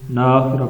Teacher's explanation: بعض لوگ اس نون کو کھینچ کے پڑھتے ہیں، ناخرہ پڑھتے ہیں